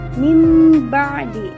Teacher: iqlab adalah mengganti suara atau bunyi nun sukun atau tanwin dengan huruf mim. Nah, huruf iqlab ini hanya ada satu, yaitu ba.